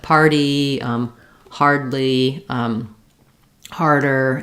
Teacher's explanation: So because the R is in a pulled back tight position, to be able to do this smoothly together, to make our party, I do feel that, yes, we lift the tip of the tongue a little further back to make that flap